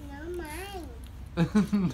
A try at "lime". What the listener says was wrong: it's lime, not mine.